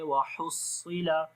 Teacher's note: ہا کو گلے کے درمیان والے حصے سے پڑھیں گے، صاد کو موٹا پڑھیں گے ، وحصل صاد کے اندر صفت استعلا ہے، صفت صفیر ہے،